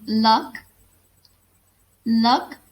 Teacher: when the tongue blocks the middle of your of our mouth so that the air has to pass around the sides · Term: lateral consonants